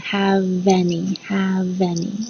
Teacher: the v and the a from any become like one sound